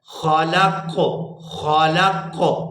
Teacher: یہاں قاف کے اوپر بھی قلقلہ ہوگا کیونکہ یہ بھی حروف قلقلہ میں سے ہے